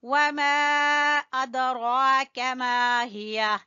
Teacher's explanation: دال کے اوپر قلقلہ ادا کریں گے